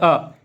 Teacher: अ जो कि जीभ के मध्य भाग से उत्पन्न होता है। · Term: मध्य स्वर